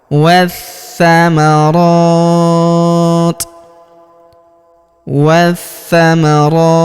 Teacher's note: huruf ti kita sukunkan atau kita matikan dengan memberikan hembusan tipis. Ya, di sini perhatikan terdapat tanda berhenti atau tanda waqaf. · Huruf ro kita panjangkan 2-4 harokat karena di atas huruf ro terdapat alif kecil sebelum huruf pemberhentian, dan huruf pemberhentian huruf ti kita sukunkan atau kita matikan dengan memberikan hembusan tipis